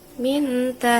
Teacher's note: terjadi karena nun mati atau tanwin bertemu dengan huruf ikhfa sehingga bunyi nun mati atau tanwin nya dibaca dengan cara samar-samar